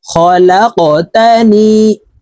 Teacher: এই কফ কলকলার হরফ উপরের দিকে ধাবিত করে ধাক্কা দিয়ে উচ্চারণ করব, এইভাবে পড়ব।